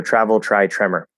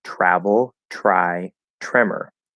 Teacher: the t before the r consonant sound not the r vowel sound will turn into a ch